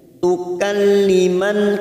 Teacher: Allah tukalliman, tukalliman dalam takrif yang tidak bersukun namanya idgham samsiyah. Tukalliman kita fokus pada huruf nun yang bertasdid, man kita tekan selama 3 harokat. Tukalliman nanya kita panjangkan 2 harokat karena fathah diikuti alif.